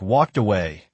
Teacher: Notice the ed in walked links as a 't' or 'd' sound straight into away